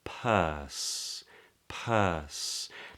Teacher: the P is made with two lips coming together · the body of the tongue comes up to make an S